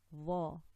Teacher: Dha, dha, and not zoy. Dha, with the tongue out slightly, touching the top two incisors from the bottom.